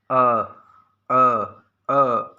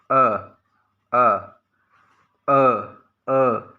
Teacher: जीवा का मध्य भाग काम करता है मध्य स्वर में